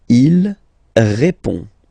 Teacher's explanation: final D is not pronounced. You will only have this on nasal sound at the end